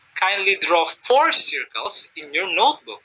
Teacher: i put some stress on the word for increasing the intonation or pitch